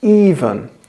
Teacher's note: In even, the stress is on the first syllable.